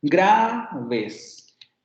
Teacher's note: la sílaba tónica es gra, porque es donde recae el acento tonal.